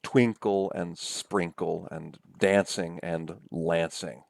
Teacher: And feminine rhyme refers to a rhyme that happens on uh, uh, two syllables or more, where the last syllable is weaker than the syllable next to the last syllable